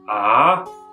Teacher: the second tone as the line suggests kind of rises in pitch · it kind of dips in pitch before rising in pitch. So we will say ah, and again, ah. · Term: tone 3